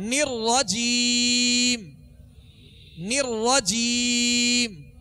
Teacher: را پر زبر اور پیش ہو تو را کو پر پڑھیں گے، یعنی موٹا پڑھیں گے